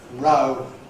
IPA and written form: rʌʊ (row)